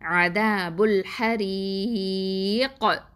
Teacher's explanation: அப்போது கல்கலா பண்ணணும், பெரிய அளவில் கல்கலா பண்ணணும். · மத்து எழுத்து வந்திருக்கா, யாவல் மத்து இருக்குதா, அதனால். அப்போது 4 இல்லைனா 6 அலிஃபாவது நீட்டி நிப்பாட்டணும் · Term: கல்கலா குப்ரா, மத்தல் ஆரிதலில் சுக்குன்